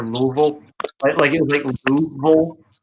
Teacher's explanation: Like the southern eating of syllables is something I find really endearing. Because once you begin to understand it, it's actually really like, oh, you're just cutting the corners that the rest of us are too afraid to.